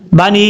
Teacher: इसको 2.5 से 3 अलिफ के बराबर आप इसको लंबा करके पढ़ सकते हैं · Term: मद मुनफसिल